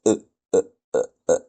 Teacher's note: Alors, c'est un coup de glotte, on dit un coup de glotte